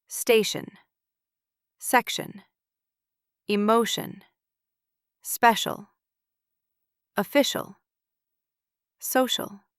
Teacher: Here, T or C becomes a soft sh, and the I becomes a sound.